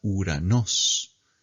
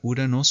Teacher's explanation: en ou no suena ou, sino que suena U.